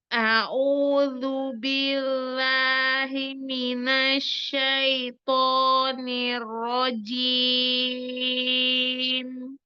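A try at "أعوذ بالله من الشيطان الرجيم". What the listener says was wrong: Masya Allah, udah bagus kak. Tapi kayaknya mulutnya harus lebih semangat gitu.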